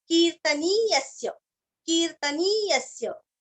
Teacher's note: इतीदं कीर्तनीयस्य, की दीर्घ, कीर्तन शब्द सभी को पता है, नी भी दीर्घ लेना है और य के ऊपर आघात देना है